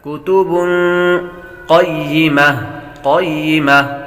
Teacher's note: فیہا کتب قیمہ فیہا کتب قیمہ فیہا کتب بابر تنوین ہے، تنوین کے بعد قاف حروف اخفاء میں سے آ رہا ہے، غنہ کریں گے۔ کتب قیمہ قاف کو پر پڑھیں گے، قاف حروف مستعلیہ میں سے ہے۔